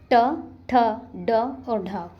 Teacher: इसको ठ बना लीजिएगा, ट, ठ, ढ और ढ ये हमारी मूर्धन्य ध्वनियाँ होती हैं। हमारी जीभ ऊपर वाली मूर्ध उस पर टकराती है